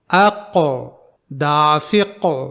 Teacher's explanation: جب ہم قلقلہ کرتے ہیں تو حرف قاف کی آواز سختی سے بند نہیں ہوتی ہے، بلکہ اس کی تھوڑی سی آواز پھر سے جاری ہوتی ہے، جیسے اقو دافق۔